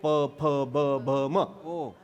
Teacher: हे दुसऱ्याच्या ओठाला ओठ लावल्यानंतर नाही अक्षर तयार होत ना. आपल्याच ओठाला आपलाच ओठ लागला की अक्षर तयार होतं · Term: ओष्ठ, ओष्ठ्य